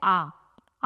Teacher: आ में हमारा मुंह पूरा खुल रहा है, इसलिए वह है विवृत, विवृत स्वर